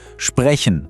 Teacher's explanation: Eher von vorne im Mund, er ist ganz weich, das ist der Ich-Laut.